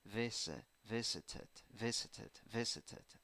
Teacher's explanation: dictionary this one visited seven letters seven sounds three syllables a the first syllable is the stressed syllable and in the first syllable you have a tiny eye